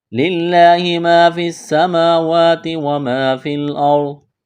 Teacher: لفظ اللہ کے نام سے پہلے زیر ہے تو لفظ اللہ کے نام کو باریک کرنا ہے ، الف مدہ ہے، ایک الف کے برابر کھینچنا ہے، اس